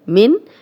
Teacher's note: اب دیکھیں نون ساکن آگے حمزہ آ گیا، ہم غنہ نہیں کر رہے